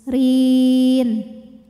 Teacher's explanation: ro dibunyikan secara tarqik karena ro berbaris kasrah maka dibacanya tipis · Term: tarqiq